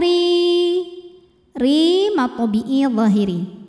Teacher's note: karena ro berbaris kasrah maka cara bacanya tipis pangkal lidah datar